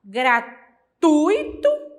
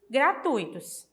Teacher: Uma vogal e uma semivogal. A vogal é pronunciada com mais força do que a semivogal. A semivogal é pronunciada mais fraca. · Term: ditongo